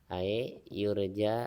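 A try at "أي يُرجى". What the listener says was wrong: Ya, jangan ae ya. Gak ada e ya bahasa Arab mah ya. Ae mah eta mah orang lembur.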